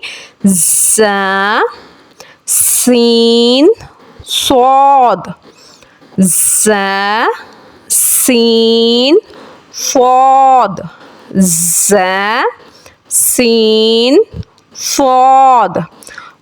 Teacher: ان کے مخرج سے نکلتے وقت ان حروف کی آواز کے ساتھ ایک سیٹی پیدا ہوتی ہے، اسی وجہ سے ان حروف کو حروف صفیریہ یعنی سیٹی والے حروف کہا جاتا ہے۔